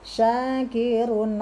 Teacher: Fa innallaha syakirun, sya 2 harokat karena ada alif. Kirun, a tanwin bertemu dengan ain dibaca idhar atau jelas.